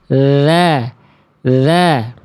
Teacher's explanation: Kalau huruf dzal enggak dibiarkan nafasnya lolos.